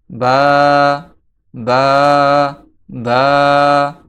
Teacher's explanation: এই বা হরফটি দুই ঠোঁটের ভিজা জায়গা হইতে উচ্চারিত হয়। এই দুই ঠোঁট মিলিত থাকা অবস্থায় এর ভিজা স্থান থেকে বা, বা, বা উচ্চারিত হয়।